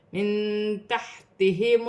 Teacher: نون ساکن میں بھی اخفا ہوگا کیونکہ تا حرف اخفا میں سے ہے